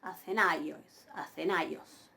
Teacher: ahí tienen el acento circunflejo, recae sobre la iota. Pero yo pronuncio ai